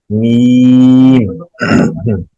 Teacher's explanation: جب گنا کرنا ہے تب تو لے کے جائیں گے, اس کے علاوہ میم کی ادائیگی میں ناک میں آواز نہیں جائے گی. میم میم یہ نہیں کریں گے.